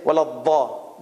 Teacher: And the Arabs like Saudi Arabia and Qatar and all these places, many of the Arabs, they will say waladha. There is no z sound. There's only d.